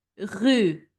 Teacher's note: So it's a guttural R produced in the throat.